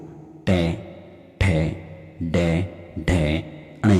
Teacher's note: मूर्धन्य ध्वनियाँ जो होती हैं वो ट, ठ, ड, ढ, अण होती हैं। ये तालु के पीछे से और गले के मतलब कंठ के आगे से निकलती हैं